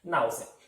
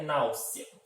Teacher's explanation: Temos a minha penúltima sílaba mais forte e ela é terminada em um ditongo crescente